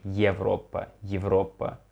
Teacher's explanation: I would say it's something between E and ye